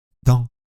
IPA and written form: dɒ̃ (dent)